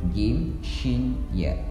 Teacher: Tempat keluar lisan yang ketiga adalah ditempati oleh huruf jim, shin, dan ya. Tempat keluarnya adalah lidah bagian tengah kita tempelkan ke langit-langit atas.